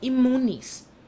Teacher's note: The letter n, which is required by strict adherence to fact, is forced by the sound of the m which follows to change into another m.